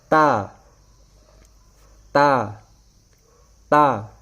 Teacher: जुबान की नोक उठकर इन्हीं सनाया उलिया के जड़ों के साथ लग जाती है, تا ادا ہو جاتا ہے۔ · ता का मखारिज है जुबान की नोक सनाया उलिया की जड़।